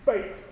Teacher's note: there's a pop of that air. It's like you're letting it build up in your mouth and you pop it out, right? So you need your mouth to read as being closed for that.